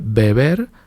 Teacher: La primera es bilabial, beber, y la segunda es lo que se llama aproximante. Mis labios se aproximan, pero no llegan a tocarse.